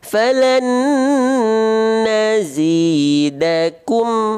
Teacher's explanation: Jangan monyong. Monyongnya itu ketika ku-nya saja. Tapi ketika mim kembalikan dia ke dalam keadaan yang tipis. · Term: mim sukun